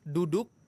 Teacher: kalau huruf dal, ujung lidah ketemu dengan pangkal gigi seri atas.